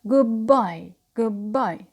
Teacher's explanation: So here again, the d becomes b before b, or because of b.